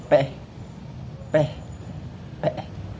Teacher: Kemudian P ini yaitu dia mengucapkannya sama huruf P, tapi dia ada hembusan udaranya, jadi P gitu, ada hembusan udaranya.